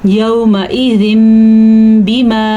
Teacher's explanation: तनवीन के बाद बा आया हुआ है तो इस तनवीन को हम मीम में बदल देंगे